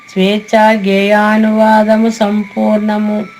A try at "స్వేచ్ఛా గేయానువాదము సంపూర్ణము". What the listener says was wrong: స్వేచ్ఛ అక్కడ చాకి కింద చాకి ఒత్తు ఉంటది అనుకుంటే నొక్కి చెప్పాలమ్మా. స్వేచ్ఛా గేయానువాదము సంపూర్ణము.